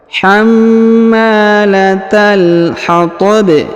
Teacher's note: Huruf ba yang di ujung disukunkan karena berada di ujung ayat atau di ujung bacaan, lalu kemudian kita pantulkan atau kita qalqalahkan.